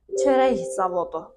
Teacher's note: bu zaman k x üstü şrixə, yəni ixə çevriləcək